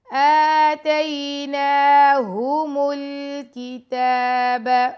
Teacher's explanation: میم کو لام سے ملا دیں گے اور تا پہ کھڑا زبر ہے، تا کو 2 سیکنڈ کا ٹائم دیں گے.